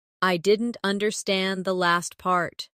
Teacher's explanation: Stress last part to focus the listener's attention.